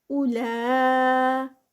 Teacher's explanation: اولا میں جو ہے وہ 4 counts کا اسٹریچ آئے گا، مد ہے. عین کی ساؤنڈ اور لا 2 counts کے ساتھ. · یہاں پر واو مدہ نہیں ہے بلکہ ہم اس کو صرف او پڑھیں گے اور واو کو سکپ کر دیں گے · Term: مد متصل